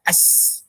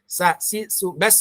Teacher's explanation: Ya, udara yang mengalir, suara yang mengalir, istifal, tipis, mudah diucapkan. Huruf sin itu sofir, bunyi berdesis. Ya, seperti desisan ular.